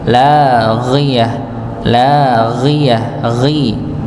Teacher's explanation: ghonya dibaca kasrah dengan tebal nggih